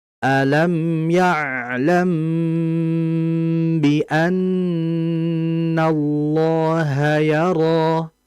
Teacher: cara membacanya mengalirkan mim yang pertama, kemudian dengan aliran yang sedang, kemudian yang kedua adalah menahan dengan aliran yang lama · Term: gunnah yang sempurna